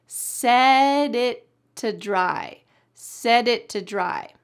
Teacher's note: The word it, the T is going to be stopped at the top of your mouth. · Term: stopped T